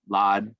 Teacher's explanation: the first shava under the dalet is silent